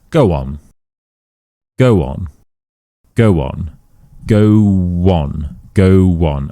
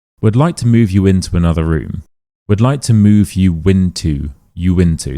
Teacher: the next word begins with a vowel sound, we don't add a Y, we add a W. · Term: vowel-vowel linking